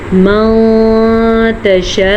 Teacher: नून साकिन के बाद हमारे पास ता हूफ ख्वा में से है। तो हमने नून को छुपे हुए गुने के साथ पढ़ना है।